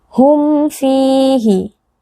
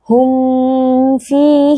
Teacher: ba dan di sini hurufnya adalah huruf Fa hukumnya adalah izhar wajib kita membaca huruf mim ini dengan jelas tanpa disertai dengan gunah yang dipanjangkan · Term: izhar syafawi